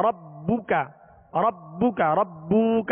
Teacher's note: با پر صرف پیش ہے تو اس کو بغیر کھینچے پڑھیں گے اور معروف طریقے سے ہونٹ گول کر کے پڑھیں گے ربک کاف کو بھی نہیں کھینچیں گے وما یہاں الف مدہ